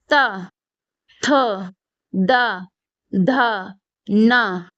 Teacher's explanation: दंत्य वर्ण, मतलब जो दांतों से बोले जाते हैं